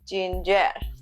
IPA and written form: ˈdʒɪn.dʒɚ (ginger)